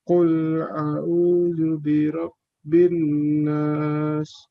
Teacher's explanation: Nun di tasdid ada gunnah. Maka dari itu ditahannya itu sama seperti ketika kita menahan ikhfa, yaitu 3 harokat.